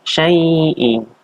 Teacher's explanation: Ini adalah mad lain atau mad lin. Dibacanya 2 harokat.